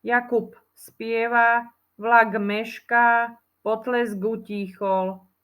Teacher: Takže ak si správne počul a dostatočne zreteľne som to ja vyslovila, tak by si tam mal počuť v slove Jakub namiesto B, P. V slove vlak by si mal počuť G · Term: spodobovaniu